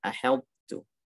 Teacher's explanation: harus dibaca dengan sifat isti'la dan itbaq, tapi tidak dibaca dengan qalqalah karena dia nggak diidghamkan.